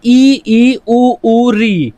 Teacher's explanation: संवृत स्वर में हमारी जीभ ज्यादा ऊपर उठ जाती है, यह सबसे कम खुलता है हमारा विवर। आपकी ई उ री, ये आपके 5 वर्ण हैं जो संवृत स्वर हैं।